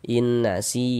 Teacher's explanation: Sebelumnya ada harokat kasroh, maka huruf yang memiliki harokat kasroh ini dibaca panjang, sehingga si dibaca panjang. Mad tabi'i panjang 2 harokat.